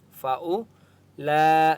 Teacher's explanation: لام کے اوپر بڑی مد ہے اس لیے 4 سے 5 الف کی مقدار کھینچ کر پڑھیں گے